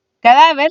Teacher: vez cadáver se divide en tres sílabas que da y ver siendo su sílaba tónica la segunda de atrás hacia adelante es decir la penúltima sílaba